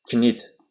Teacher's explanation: K harfi N harfidan oldin talaffuz qilinmaydi deyapti